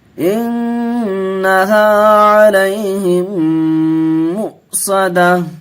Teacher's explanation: تشدید گنہ کر کے پڑھیں گے، نون پر تشدید ہے